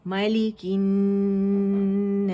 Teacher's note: تھوڑی سی سین کی آواز چلے گی ایک کاؤنٹ کے لیے، ساکن کر دیا ہم نے اسے، ٹھیک ہے۔